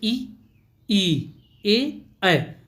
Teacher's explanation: जिन स्वरों के उच्चारण में जीभ का अग्र भाग काम करता है उसे हम अग्र स्वर कहते हैं। जैसे हम बोलते हैं तो हमारा जो जीभ का आगे वाला भाग होता है वही कार्य करता है।